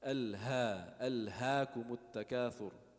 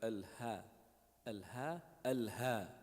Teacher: If you hear like some native Arab speaking, they pronounce the ha like that, very deep, very like with their breath.